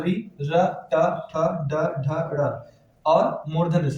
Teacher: इसके बाद री, र, ट, ठ, ड, ढ, ड़ और मूर्धन्य स ये सभी मूर्धा से उच्चरित होते हैं।